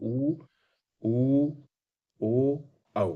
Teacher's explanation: ऊ बोलेंगे तो ओंठ का आकार वृत्ताकार हो जाएगा। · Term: वृत्तमुखी